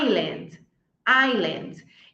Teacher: essa aqui o s ele é mudo